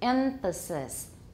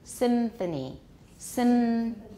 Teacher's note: Because of anticipatory assimilation or coarticulation, emphasis, it will usually, probably usually be a labiodental nasal.